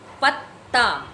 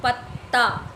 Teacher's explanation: जैसे पत्ता, देखिए एक प तो हम लोग पूरा उच्चारण करें, लेकिन पहला व्यंजन जो है वो स्वर रहित होता है, स्वर रहित यानी आधा त, पत्ता। पीछे वाला ता को हम लोग पूरा उच्चारण कर रहे हैं, लेकिन पहला वाला त को हम लोग आधा उच्चारण कर रहे हैं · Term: द्वित्व व्यंजन